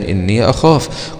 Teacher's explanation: فتح الياء وصل المدنيان والصاحبان